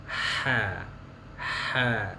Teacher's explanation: Huruf H harus bersih dari getaran.